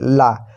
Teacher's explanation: जीभ बीच में स्पर्श करे और हवा जीभ की दोनों ओर से निकले